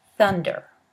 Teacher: The first consonant, th, is represented by the Greek letter theta, and it is a voiceless dental fricative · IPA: /θ/